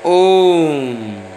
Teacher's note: वे स्वर जिनके उच्चारण में ह्रस्व स्वरों से 3 गुना, यानी कि बहुत ज़्यादा समय लग रहा है, 3 गुना समय लगता है, वे प्लुत स्वर कहलाते हैं।